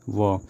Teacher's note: जिन व्यंजनों के उच्चारण में दोनों ओठ दांतों को स्पर्श करता है उसे हम दंत उष्ट व्यंजन कहते हैं